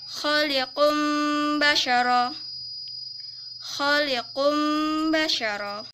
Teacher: nun sukun atau tanwin bertemu dengan huruf ba, dibacanya berubah menjadi mim dengan mendengung